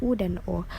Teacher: Yang ketiga, vokal belakang. Yang ini vokal yang dihasilkan oleh gerakan turun naiknya lidah bagian belakang atau pangkal lidah, seperti U dan O.